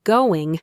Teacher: make sure you're not saying a hard g at the end. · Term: soft ing